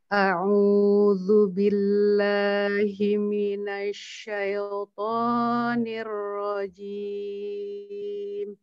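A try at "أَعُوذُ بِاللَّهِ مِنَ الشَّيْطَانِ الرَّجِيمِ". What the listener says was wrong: A'udzunya kepanjangan. Jangan dibaca seperti ini. A'udzu billahi minasya. Nah, seperti itu jadi kepanjangan. Langsung saja. A'udzu billahi minasyaitonir rajim.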